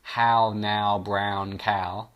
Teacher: we're getting the repetition of a vowel sound a sound that's made up of vowels and it's that ow ow ow sound that gets repeated all the way through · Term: assonance